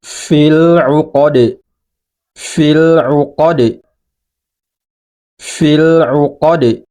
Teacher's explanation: nah ini dibaca sukun atau huruf dalnya ini jadi mati sehingga kalau huruf Dal ini mati atau sukun maka ia harus dipantulkan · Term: memantul